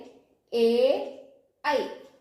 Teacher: ഇവയ്ക്ക് സ്ഥാനം വരുന്നത് കണ്ഠവും താലുവുമാണ് ഇവ രണ്ടും കൂടി ചേരുമ്പോഴാണ് എ യും ഐ യും ഉച്ചരിക്കുവാൻ സാധിക്കുക അതുപോലെ